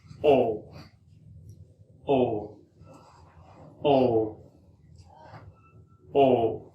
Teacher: it is a sound combined of two vowels in a single syllable. One sound starts one vowel and move to other. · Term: diphthong